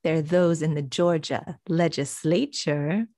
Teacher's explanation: he changes the stress of the word. It's usually legislature, but he makes it fit into his rhythm